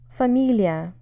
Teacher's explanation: Obviously, it's related to the word family, but notice that family, while it's stressed on the first syllable, фамилия is stressed on the second syllable.